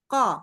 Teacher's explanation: Kalau bisa baca ko, itu pangkal lidahnya naik. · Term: huruf qaf